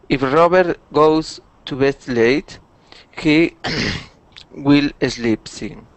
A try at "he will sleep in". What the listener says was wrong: Okay, so we want to remove that eh. Okay, all we want to say is he will sleep in.